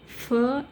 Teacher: here you have the two articulators that is upper row of teeth and lower lip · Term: labio Dental